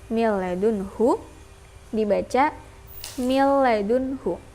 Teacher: Jadi enggak tasydid lama-lama, enggak dengung. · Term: idgham bila gunnah